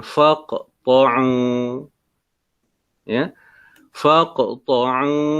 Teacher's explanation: Huruf qaf ni bertanda mati, sukun, maka dia menjadi hukumnya qalqalah. Faq ya, hukumnya qalqalah sughra sebab dia berada pada tengah kalimah.